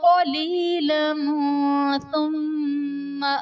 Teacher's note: قلیلا ثم میں لام پر دو زبر کی تنوین، تنوین کے بعد حروف اخفاء میں سے ثا ہے تو یہاں بھی اخفاء کا قاعدہ ہوگا، یعنی تنوین میں ہم غنہ کر کے پڑھیں گے